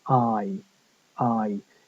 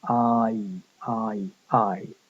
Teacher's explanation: fly we get in the word fly that's I I it's starting off somewhere near the a sound the a uh and going up towards the e sound